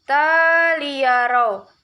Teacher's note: idgham bila guna karena ada fathah tain bertemu dengan huruf lam, cara membacanya masuk dengan tidak mendengung